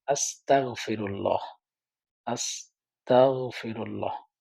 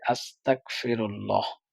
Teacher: এখানে গইনের জায়গায় কাফটা তার উচ্চারণে চলে আসে এতে হয় কি এতে অর্থ অনেক পরিবর্তন হয়ে যায় এখানে হচ্ছে